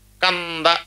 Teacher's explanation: న మ ఇవి అనునాసికములు ముక్కుతో పలుకుతాం అందుకే న మ అంటాం నాసికానుస్వారస్య సున్నా ఉన్నప్పుడు కూడా ముక్కుతో పలకాలి